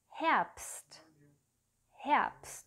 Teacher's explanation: Vor dem S und vor dem T wird das B, das B, wie ein P ausgesprochen